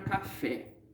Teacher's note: A sílaba tônica é o fé. Ela é a última. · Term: oxítona